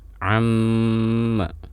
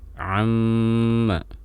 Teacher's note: Setiap sahabat mendapati ada huruf mim dan nun bertasydid, maka ini memiliki hukum bacaan gunnah yang ditahan lama, atau bahasa dalam ilmu tajwidnya al-gunnatu al-mutawwalah, gunnah yang dipanjangkan penahanan suaranya. Jadi saat kita mendapati seperti ini, contoh di sini amma, jadi tidak langsung dilepas huruf mimnya, jangan amma tapi amma.